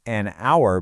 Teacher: we say an hour because that h is totally silent. The word really starts with a vowel sound.